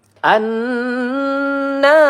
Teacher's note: an nun bertasydid ya. Kita panjangkan dua atau tiga harakat ya. Gunah musyaddadah namanya na.